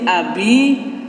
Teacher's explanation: daripada Mad Thobi'i atau mad asli dan di sini Abi yaitu kasrah bertemu dengan Ya Sukun itu Mad Thobi'i panjangnya dua ketukan